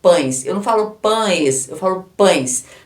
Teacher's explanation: Então, vogal é o A e o E aqui, o E é a semivogal, só que representado pelo fonema I